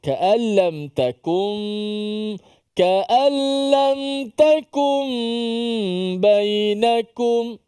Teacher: Takum dipanjangkan gunnah, nun bertemu dengan ba. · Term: iqlab